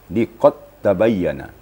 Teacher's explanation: Dal itu hilang kalqalanya dijadikan tasdik di atas ta namanya idigam mutaqaribin karena makhrajnya berdekatan maka diidgamkan Dal kepada ta